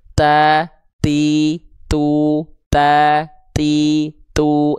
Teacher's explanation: Jadi terpercik nafas tuh kita ada nafas keluar tapi sedikit, cuman percikan saja. · sifat hams pada huruf ta ini karakternya bukan mengalir nafas, tapi cukup dipercikan saja nafasnya. Ya, terpercik nafas.